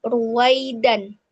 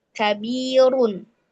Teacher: Ro dummah, ro dummah tanwin itu dibaca tebal.